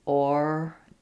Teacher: it's 3 syllables. So you have first syllable stress again. Origin. Where you'll have more reduction there is in the gin syllable, almost no vowel there.